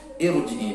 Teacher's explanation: Ra ini dibaca tafkhim tebal karena jatuh setelah harakat kasrah yang tidak asli. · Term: ra tafkhim